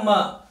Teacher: यानी कि म का उच्चारण स्थान क्या है, ओष्ठ। लेकिन ओष्ठ के साथ क्या आएगी, नासिका, ओष्ठ प्लस नासिका।